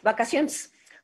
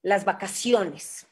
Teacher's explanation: esa última E casi no se escucha, ¿no? Puede casi convertirse en un schwa.